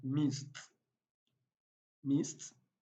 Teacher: whenever voiceless consonant sounds like p, k, th, ch, sh, and s come before the ed changes to t